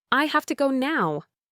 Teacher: have to reduces to hafta.